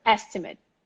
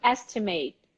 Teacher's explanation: stress on the first syllable the last syllable short